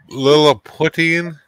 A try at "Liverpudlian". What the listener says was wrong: No, not Putin. Right, liver. Liver. Lee. Ann. Liverpudlian. Liverpudlian.